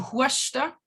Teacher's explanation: a long oo turns into a ua, as in huasta for coughing